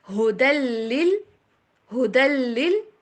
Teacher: تشدید والے کے اوپر آپ نے زور دینا ہے اور جزم والے کے اوپر زور نہیں دینا